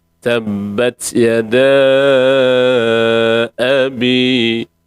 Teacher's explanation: A tu adalah harakatul bina, tidak boleh panjang, hanya kita boleh baca satu harakat saja · Hamzah kita sebut tu bukan o. Kita tak nak jadi serat o dah, jadi serat a.